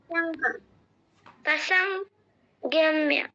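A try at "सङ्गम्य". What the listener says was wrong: না, ঠিক করে বলো। না, গিও কেন বলছো? সঙ্গ, সঙ্গ, সঙ্গ, বলো। পসঙ্গ, পসঙ্গম্য।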